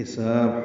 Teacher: حساب ہا وسط حلق سے ادا کریں گے